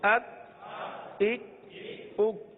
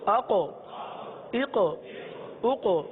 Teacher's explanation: دیکھیے ایک طرف پہلے کاف پڑھا، پھر دوسری طرف قاف، یہ دو حروف ہم نے پڑھے. کاف کو ہم نے باریک بھی پڑھا، قلقلہ نہیں کیا. قاف کو پر بھی پڑھا اور اس میں قلقلہ بھی ادا ہوا ہے